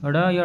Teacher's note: इनका उच्चारण करते समय जीभ झटके से नीचे गिरती है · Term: उच्छिप्त व्यंजन